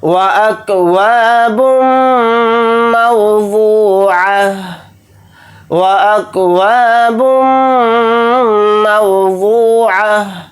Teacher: با کو میم کے ساتھ ملا کر پڑھیں گے، میم کے اوپر تشدید ہے تو میم کے اندر غنہ کر کے پڑھیں گے